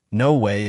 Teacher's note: Her voice went up high, showing she was shocked.